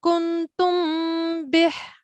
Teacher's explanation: the Mim Sakin quickly goes to the origin on the articulation point of Ba. It is joining quickly to the sound of Ba. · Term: Ikhfa Shafawi